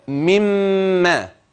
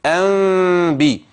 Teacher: ميم خالصه بغنه طبعا انا عايزها مخفاه يبقى كده انبي يبقى في اطباق للشفتين في اطباق في الشفاه ولكن اطباق بدون كز حتى لا تتحول الى ميم مشدده